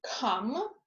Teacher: Before a vowel in stressed position, K is aspirated, as in come.